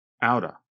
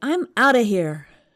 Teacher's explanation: they said out of quickly. So it almost sounds like one word